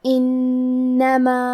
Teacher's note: کلمت انما میں حرف نون پہ تشدید ہے تو ہمیں 2 حرف کے برابر نون کو پڑھنا ہے۔ آخری میں الف پہ مد کا علامہ ہے، یہ مد جائز منفصل ہے تو ہم اپنی آواز 2 سے 4 مد کے برابر لمبی کریں گے۔